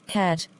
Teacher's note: articulated in the front part of the vocal tract, with the tongue half open and the lips in a spread position